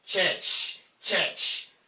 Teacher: There is a sudden release of air plus gradual release of air in the course of pronouncing the affricate sound.